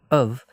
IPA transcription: əv